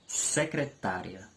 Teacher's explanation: a sílaba tá é uma sílaba forte dentro da palavra secretária é uma sílaba em relação às outras com maior intensidade E